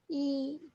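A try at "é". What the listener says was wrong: Not E sound. When laxo ague will come along with letter E, the sound will be A. A. Ate.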